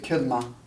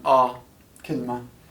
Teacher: in other places like Iraq they say kilma. They make a more A-class sound.